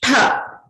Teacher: Ta was an alpa prana. Tha is a maha prana.